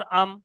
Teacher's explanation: মিমটা হলো 16 নম্বর মাখরাজ আছে 2 ঠোঁটের ভিজে অংশ